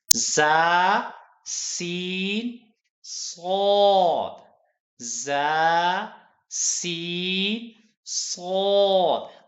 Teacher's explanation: हमारे यानी जुबान की नोक और अगले तमाम दांत जो हैं वो जब मिलते हैं तो ये 3 हरूफ अदा होते हैं। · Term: सीटी वाले हरूफ